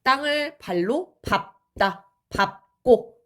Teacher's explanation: 리을로 발음이 돼야 되는데 얘가 예외로 자음 앞에서는 밥으로 발음이 됩니다